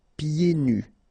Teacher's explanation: so you don't hear the D